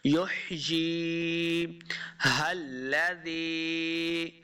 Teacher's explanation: ہا کو لام کے ساتھ ملانا ہے، لام مشدد ہے۔